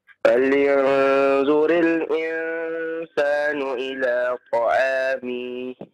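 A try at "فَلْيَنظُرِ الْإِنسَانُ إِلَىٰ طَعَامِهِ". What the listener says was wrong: Nah, jangan dipanjangkan ya. Ketika berhenti maka sukunkan ta'amih. Jangan dipanjangkan ya. Ila ta'amih. Nah, jangan dipanjangkan, tidak ada maddiyahnya di sana ya.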